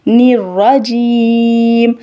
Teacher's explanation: جیم کہتے ہوئے ناک کے اندر آواز نہیں جائے گی